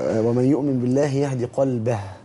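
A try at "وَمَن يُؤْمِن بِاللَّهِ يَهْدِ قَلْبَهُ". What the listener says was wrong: يبقى لازم الهاء تطلع. كده ما فيش هاء طلع خالص. ولا دي برضه مش هاء لان ده هوا بس.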